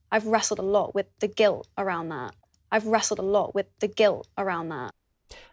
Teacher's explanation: uses a glottal stop at the end of the word that, even though she's not connecting to another word